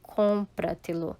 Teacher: Leva a sílaba tônica em la sílaba anterior à la antepenúltima sílaba